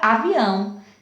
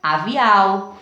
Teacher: o som do ar sai pelo nariz né então ele marca o som nasal · Ó, avial, não tem nasalização. E com ele, com o tio, o som do A sai pelo nariz